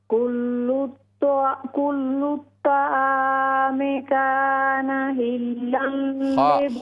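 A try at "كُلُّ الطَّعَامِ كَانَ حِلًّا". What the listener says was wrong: हा को दुरुस्त करें, कान हिल्लल।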